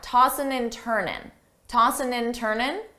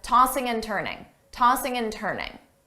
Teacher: commonly, a native speaker will drop the G sound on tossing, ing, and just say tossin', tossin'.